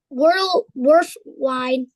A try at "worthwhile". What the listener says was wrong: It's pronounced worthwhile. Yeah, it's not a D, it's an L, so worthwhile.